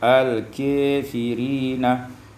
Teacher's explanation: imalatu fathatul kaf wal alif, dibaca imalah fathah kaf dan alif